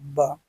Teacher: ओष्ठ अल्पप्राण घोष व्यंजन वर्ण